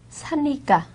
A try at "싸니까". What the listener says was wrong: 싸니까. 참 저에게는 사니까로 들려요 지금. 싸다 하면 싸니까죠. 싸다,